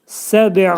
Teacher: Və bu bə hərfinin demək qəlqələ etdikdə az-acıq i'yə meyilli şəkildə deyilir. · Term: Kiçik qəlqələ